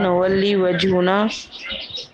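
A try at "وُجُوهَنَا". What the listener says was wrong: وجوہنا. وا پہ زبر نہیں، واؤ پہ زبر نہیں ہے، واؤ کے اوپر پیش ہے. وجوہنا.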